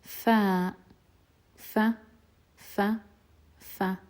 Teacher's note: the pronunciation of it happens when the bottom lip meets the upper teeth